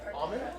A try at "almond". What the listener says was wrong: No, it's not almond. It's almond. The L is silent.